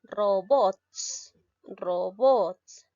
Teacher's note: la mayor fuerza de voz la tiene la sílaba bots por lo tanto es una palabra aguda